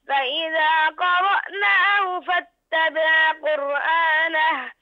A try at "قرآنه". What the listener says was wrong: أحسنت يا عبد الله، لكن انتبه إلى الهاء، الهاء ضعيفة، لا تضغط عليها في الشدة. قرآنه، ها؟ الهاء ضعيفة، بارك الله فيك.